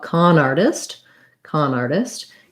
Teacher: little stress on art and no stress on test con artist this t in artist uh is a flap t it sounds like a light d